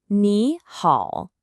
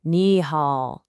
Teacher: Do you hear how the pitch kind of dips down and then comes back up? The #1 mistake English speakers make is saying it flat, monotonic, like ni hao. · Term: dip and rise